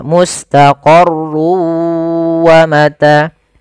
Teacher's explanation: masukkan tanwin ke huruf waw sehingga suara n-nya hilang. Tinggal ganti wa, maka mustaqarrun awalnya menjadi mustaqarru karena dia bertemu waw masuk ke waw. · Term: idgham bi gunnah